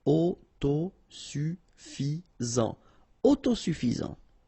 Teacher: Final T not pronounced.